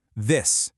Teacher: th is what we call a fricative. Air kind of hisses between your tongue and teeth.